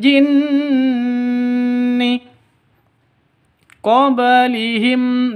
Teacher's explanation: mim mati bertemu dengan mim cara bacanya masuk ke mim disertai dengung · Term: idgham Mimi